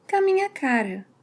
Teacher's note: doesn’t say ‘com a’, but he shortens it to ‘ca’.